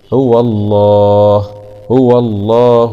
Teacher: مع تغليظ اللام لأنها جاءت بعد حرف مفتوح